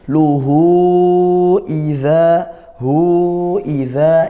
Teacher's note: ha kinayah atau ha dhamir hu bertemu huruf hamzah ya. Panjangnya 2 alif atau 4 harokat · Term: matsilah tawilah